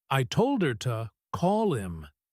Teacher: If you tap your hand on the table, you tap on told and call. The other words just slide by.